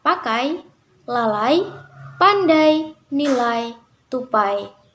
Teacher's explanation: yang kedua diucapkan dengan posisi lidah lebih tinggi dari yang pertama posisi lidah semakin menaik sehingga strukturnya semakin tertutup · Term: diftong naik